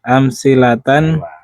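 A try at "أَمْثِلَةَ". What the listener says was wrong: Kalau ini nggak boleh tanwin.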